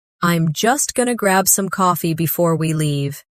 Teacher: Notice how going to became gonna and how I am became I'm.